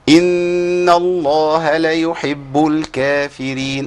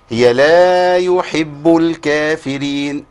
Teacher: انا اسقطت المد بسبب ان انا جريت من بعد الحركه على طول